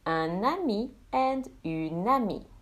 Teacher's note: Now, if the masculine ends in a vowel, both masculine and feminine will have the same pronunciation even if the feminine has the extra E, as the E is silent.